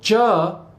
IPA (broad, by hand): dʒ